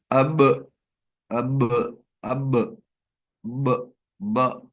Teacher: تو آواز کہاں رکی؟ دونوں ہونٹوں کے اوپر رک گئی